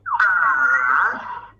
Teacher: That is the sound for the third tone. It starts normal, and then goes low, and then rises up again.